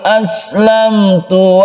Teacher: Izhar artinya jelas dan terang suara mimnya. Syafawi artinya bibir, bahwa makhraj dari mim itu ada di bibir. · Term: izhar syafawi